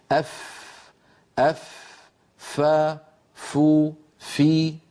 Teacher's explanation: فمن أين تخرج الفاء؟ تخرج من أطراف الأسنان العليا، الثنايا العليا، عندما تتوضع على باطن الشفة السفلى. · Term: مخرج حرف الفاء